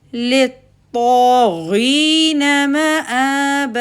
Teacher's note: اور غو کیسا لیٹر ہے؟ فیٹ، تو بیک آف دا ٹنگ غو کو ادا کرتے ہوئے اٹھے گی.